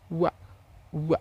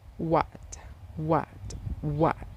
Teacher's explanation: This consonant sound is produced when the back part of tongue contacts the soft palate and lips also come close to each other. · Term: Labiovelar sound